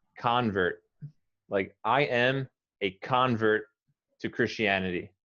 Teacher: As a noun, you emphasize the first syllable.